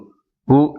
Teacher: உதடுகளை குவித்து ஒலிக்கும் போது பூ என்னும் எழுத்து ஒலிக்கிறது